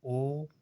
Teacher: इसको जिन स्वरों के उच्चारण में मुख आधा बंद हो, इसमें ओ बोलोगे तो आधा खुला रहता है मुख, आधा बंद रहता है। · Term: अर्ध समृत स्वर